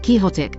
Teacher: emphasis on the first syllable short o in the middle